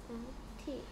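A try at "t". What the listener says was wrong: 티가 내는 소리는 트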